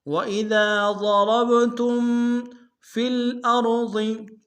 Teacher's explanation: وَإِذَا ضَرَبْتُمْ فِي الْأَرْضِ، فِل میں فا کو لام کے سامنے آئیں گے، غنہ نہیں ہوگا، حمزہ کو را کے سامنے آئیں گے، موٹا ادا کریں گے، اور ضاد کو موٹا ادا کریں گے۔